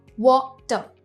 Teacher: हम R pronounce नहीं करते